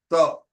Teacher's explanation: when I am saying the velar ta, the anterior dorsal is touching the palatal. It becomes ta.